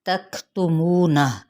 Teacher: वाव होंठों की ना तमाम गुलाई के साथ